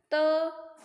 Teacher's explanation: त दंत से बोला जाता है